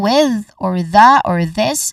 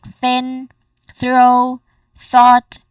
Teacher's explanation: First is a voice th sound. Say for example with or the or this and then the unvoiced or voiceless th sound